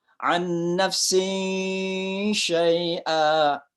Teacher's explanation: Ada tanwin ketemu dengan shin. Ya. Maka itu dibaca samar-samar. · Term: ikhfa